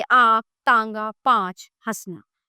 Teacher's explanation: अनुस्वार, अनुस्वार का उच्चारण करते समय श्वास केवल नाक से निकलती है, जैसे अंगूर, पतंग, चंचल, हंस। अनुनासिक, अनुनासिक का उच्चारण करते समय श्वास मुंह और नाक दोनों से निकलती है और थोड़ी सी गर्म होती है, जैसे आंख, तांगा, पांच, हंसना।